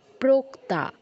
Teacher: ও এর উচ্চারণটা দিয়ে খেয়াল রাখবেন, ও যেন উ না হয়ে যায়।